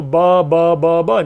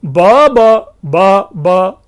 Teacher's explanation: लेकिन इसी को अगर ब ब ब ब ऐसे, यानी कोई भी अगर हम सुर देते हैं, उसको एक टोन देते हैं, तो उस टोन के आधार पर वो चारों ब के भिन्न भिन्न अर्थ बन जाते हैं